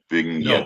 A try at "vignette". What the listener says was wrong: you're saying Ving Reigns it's not Ving there's no Ving